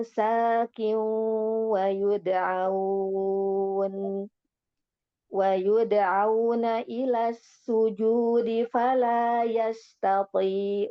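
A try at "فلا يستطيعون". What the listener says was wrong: Ya, coba ainnya yastati'u ya. Fala yastati'un. Fala yastati'un. sin yasta.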